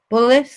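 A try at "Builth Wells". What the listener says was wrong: Bulf. The I is before the L. Bulf.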